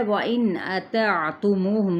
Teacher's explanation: نون پہ اظہار کرنا ہے اور یعنی نون کی آواز کو ظاہر کرنا ہے